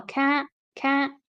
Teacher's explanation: I think she doesn't really pronounce the T there again that's quite an American accent feature